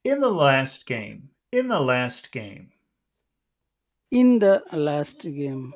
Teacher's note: the word last which is the most important word in the phrase if you want to sound serious that should be pronounced low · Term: low tone